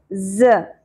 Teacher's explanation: ज़ में सीटी और शिद्दत का एलिमेंट होगा।